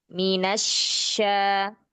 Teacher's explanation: syin-nya kan bertasydid ya, jadi kurang sedikit mengalir suaranya